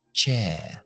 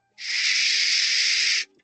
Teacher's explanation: La ch es lo que llamamos oclusiva, es decir, tapamos la boca con la lengua, cogemos presión y explotamos.